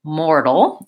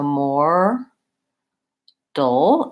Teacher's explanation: We say mortal. It sounds more like a D. It's a flap T. So more dull.